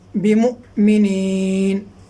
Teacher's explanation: میم حمزہ پیش مو، جھٹکا لگے گا یہاں پہ، جھٹکے کے ساتھ پڑھیں گے